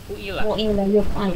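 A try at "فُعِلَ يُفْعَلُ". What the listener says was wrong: Fu'ila yuf'alu. fu'ila ya. Ini di domah semuanya, fa-nya di sini di domah. Cuman ini nggak kelihatan ya.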